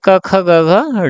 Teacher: यह कंठ से बोले जाते हैं यानी गले से बोले जाते हैं। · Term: कंठ व्यंजन